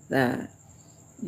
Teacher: Tsa itu ee di ujung lidah saja ya. Tsa ya. Jangan berubah menjadi sin ya. · ta itu di ujung lidah saja ya